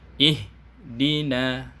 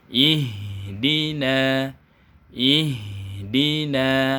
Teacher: bunyi H-nya harus mengalir sampai ke huruf berikutnya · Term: sifat rokha'ah